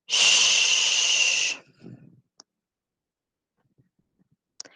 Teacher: The tongue blade makes light contact with the alveolar ridge and the front of the tongue is raised. The sh sound is unvoiced and leanness.